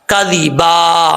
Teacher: زال کو بغیر سیٹی کے پڑھیں گے